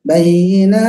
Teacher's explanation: Ta itu tidak berdesis, dia menghembus.